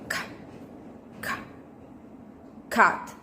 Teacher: With manner of articulation, stop, and place of articulation, velar.